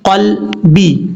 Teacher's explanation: قاف یہ حروف مستعلیہ میں سے پر پڑھا جائے گا، اور لام میں قلقلہ نہیں کرنا، لام ساکن ہے